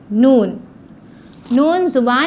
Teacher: जुबान की नोक ऊपर के दातों के मसूड़ों को लगाया जाए